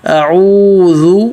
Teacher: اعوذ، حمزہ پتلا، عین پہ ہونٹ گول، عین حلق سے، اعوذ، اور او پہ ایک الف مد کے برابر کھینچنا ہے